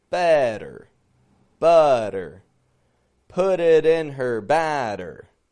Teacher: We're getting it strong, weak, strong, weak. And the flap T's are helping us control that transition from the strong syllable to the weak one. · Notice that nice long tongue twister is full of the letter T. However, those T's aren't coming out like regular T's, right? They're coming out like flap T's.